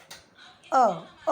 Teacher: जैसे कि अ में देखो, अ बोलने में मुझे कहीं पे भी मुंह को बंद नहीं करना पड़ रहा, होठों का उपयोग नहीं करना पड़ रहा, जीभ का उपयोग नहीं करना पड़ रहा है, तालु और कंठ का करना पड़ रहा है मुझे, है ना।